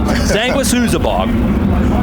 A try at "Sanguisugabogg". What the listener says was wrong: Close. You gotta pronounce the G. Sanguisugabogg or Sanguisugabogg.